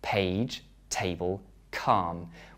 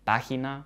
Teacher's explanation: In the English words page, table, calm, we add air to the p, t, k sounds.